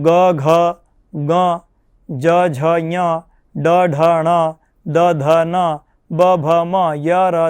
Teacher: આટલા જે વર્ણો છે આ વર્ણોનો બાહ્ય પ્રયત્ન સંવાર, નાદ અને ઘોષ.